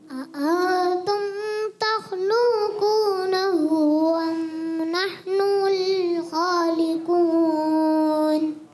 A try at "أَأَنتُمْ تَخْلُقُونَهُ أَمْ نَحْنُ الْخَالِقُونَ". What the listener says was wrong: انتم, یہاں پر ایک تو آپ نے تھوڑا سا کھینچا اور تخلوقونہ لام کو بھی پیش کھینچ دیا, کھینچنا نہیں. انتم تخلقونہ ام نحن الخالقون. تخلقونہ, پورا پڑھیں. تخلقونہ.